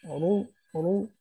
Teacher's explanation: রা, ফাতহা আলিফ সগীরা রা, রা। তারপর রা দম্মা রু, রু, রু মোটা করে, রা দম্মা রু।